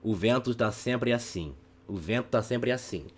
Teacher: we're constantly alternating between nasal vowels and oral vowels